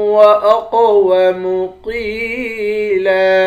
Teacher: قاف کو موٹا پڑھیں گے، یا کے ساتھ ملا کر ایک الف کے مقدار کھینچ کر پڑھیں گے